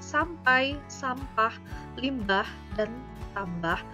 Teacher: Struktur bunyi M, P, atau M, B di dalam kata sampai, sampah, limbah, dan tambah sama-sama berfitur bilabial.